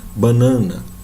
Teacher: às vezes, a gente nasaliza esse A.